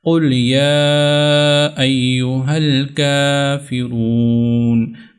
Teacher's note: کاف کے اوپر کھڑا زبر ہے تو اس کو بھی تھوڑا لمبا کرنا ہے